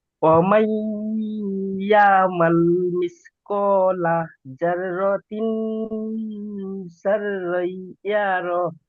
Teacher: শিন অক্ষরটি সিন উচ্চারণ হয়ে যাচ্ছে